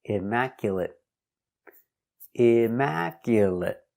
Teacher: Again, finish with the stop T, immaculate, immaculate.